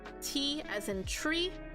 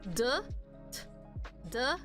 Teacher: the D sound is vibrating so that is considered voiced